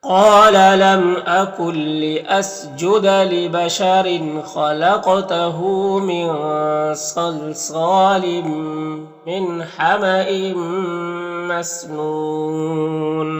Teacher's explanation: قاف حروف مستعلیہ میں سے اور حروف قلقلہ میں سے دونوں ہیں تو دونوں کریں گے